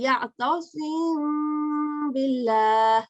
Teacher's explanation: So you do light gunna, light because it's not mushaddad. · naturally the Mim sounds hides behind the letter sounds of Ba. Both are lip letter. So you'll say Ya'tasim billah. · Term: ikhfa shafawi